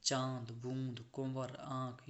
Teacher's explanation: अनुनासिक के उच्चारण में वायु नाक और मुख दोनों से निकलती है